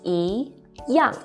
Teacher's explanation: When 一 is followed by a fourth falling tone, 一 becomes the second rising tone.